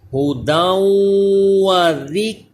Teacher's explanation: کاف کو باریک پڑھنا ہے لیکن کلکلا نہ ہو، یہ حروف کلکلا نہیں